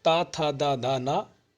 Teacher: दंत मतलब दांत से। आपकी जीभ जो है दांतों में टकरा जाए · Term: दंत व्यंजन